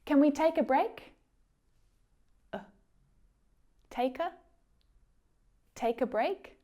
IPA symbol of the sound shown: ə